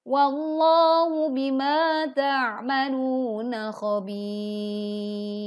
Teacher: saat ro sukun karena waqaf didahului huruf ya sukun, maka ro dibaca tipis.